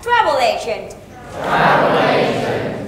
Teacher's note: the stress on the first word, right?